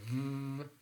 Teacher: we feel a kind of vibration, a kind of buzzing sound